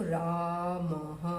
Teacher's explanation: अ की आवाज़ भी आ रही है और ह की भी आ रही है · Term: विसर्ग की आवाज़